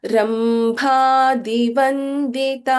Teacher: ದ last word ರಂಭ ಇಸ್ ಮಹಾಪ್ರಾಣ